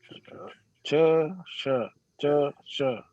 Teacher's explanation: तो जहां च बोलने से जीभ लग रही है वहीं से ये श निकलेगा।